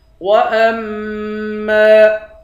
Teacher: حمزے کو میم کے ساتھ ملا کر میم پر غنہ کریں گے. میم کے بعد الف ہے، الف حروف مدہ ہے، ایک الف کی مقدار کھینچیں گے.